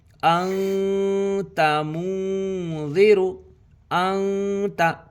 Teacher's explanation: تنوین یا نون ساکن کے بعد حروف اخفا آوے تو نون کی آواز کو ناک میں چھپا کر پڑھنا چاہیے۔ نوک زبان تالو سے ہٹا کر جیسے اردو میں پنکھا کے نون کو پڑھتے ہیں۔ اخفا کی مقدار 1 الف ہے۔